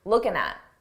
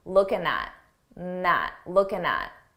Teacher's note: it's very common to take a word that ends in ing and drop the G sound